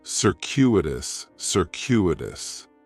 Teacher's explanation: In the first syllable, that C is going to have more of an S sound, circuitous. The stress is going to be on that second syllable, and that CU is kind of like you're saying the letter Q